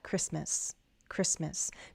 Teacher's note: Christmas, we don't pronounce the T.